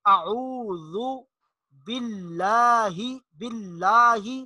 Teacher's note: لفظ اللہ کا لام اس کو باریک پڑھیں گے، اور جو شد ہے جہاں پر بھی یہ شد آئے گی، آپ کو شد نظر آ رہا ہے، وہاں تھوڑا سا مضبوطی کے ساتھ شد کو مضبوطی کے ساتھ ادا کرنا ہے اور لام کو باریک پڑھنا ہے۔